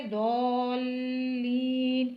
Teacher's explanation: द्वाद को लाम से भी मिलाना है, फिर लाम को याई मद्दा से मिलाते हुए दोल्लीन करके पढ़ना है